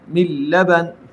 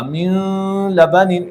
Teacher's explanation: نون کو میں نے لام کے ساتھ اس طریقے سے ملایا کہ دونوں کو مشدد ادا کیا · اگر آپ اس میں غنہ کریں گے تو اس طرح ہوگا، من لبن، یہ غلط ہے، اس میں غنہ نہیں ہے، ادغام ہے